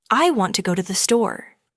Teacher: The stresses are on want and store. The words to and the are much softer. This creates the rhythm of English.